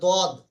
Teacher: জিহ্বার কিনারা এবং তার বরাবর উপরের মাড়ির দাঁতের গড়ার সাথে লাগিয়ে উচ্চারিত হয় দদ। জিহ্বার কিনারা, কিনারা বলতে এই ধরুন, আমাদের জিভটা একটু লম্বা টাইপের, তাই না? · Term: দদের মাখরাজ